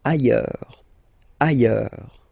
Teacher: Final S not pronounced, and then you've got this y sound.